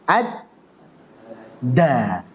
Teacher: Harusnya kan taraful lisan ma'a usulith thanaya al-ulya. Ujung lidah bertemu dengan pangkal gigi seri atas. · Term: dal